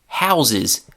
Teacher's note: That's H-O-U-S-E, and the S there is pronounced as a Z. So in house, the noun becomes a verb, that S turns into a Z pronunciation